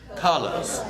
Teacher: Release the R and do a UH. Colors. Yes.